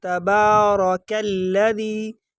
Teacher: آگے جو کاف ہے یہ کاف باریک والا کاف ہے، اس کو باریک پڑھیں گے۔ اکثر لوگ اس کو پر پڑھتے ہیں، موٹا پڑھتے ہیں، یہ غلط پڑھتے ہیں، اس کو باریک پڑھیں گے۔